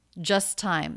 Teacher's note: the t is dropped in just because it comes between two consonants · dropped in just because it comes between two consonants just time the s going right into the next t there's no extra t